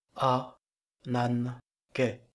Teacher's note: le gamma se prononce comme un nu devant un capa, sinon le mot ne serait pas prononçable.